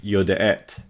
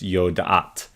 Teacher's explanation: with the guttural's you're using the a-class vowels so it's yo da'at because guttural's love a-class i'm gonna talk